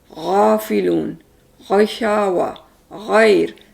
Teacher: ये हरूफ जो है हमारे इससे गले के ऊपर के हिस्से से निकलते हैं। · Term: गन